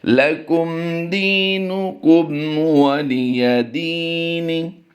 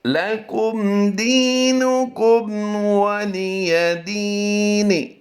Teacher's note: ہم نے کسی لفظ کو بھی لمبا نہیں کیا، دال یا زیر دی میں صرف ہم نے تھوڑا سا کھینچا ہے، 1 الف کی مقدار کے برابر